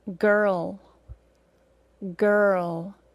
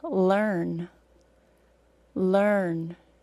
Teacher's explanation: with the schwa + R we just hear the R sound and no distinct extra vowel sound